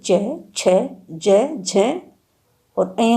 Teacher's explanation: चय वर्ग जो है अब स्पर्श व्यंजन नहीं है, यह स्पर्श संघर्षी व्यंजन में सम्मिलित कर दिया गया है हिंदी में। स्पर्श संघर्षी व्यंजन चय वर्ग के बोलने में सांस स्पर्श के साथ साथ कुछ घर्षण के साथ निकलती है